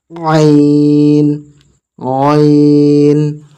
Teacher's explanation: আইন গলা থেকে বের হবে চেপে একদম গলা থেকে বের হবে